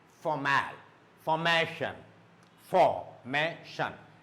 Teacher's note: So this ma, it should go up.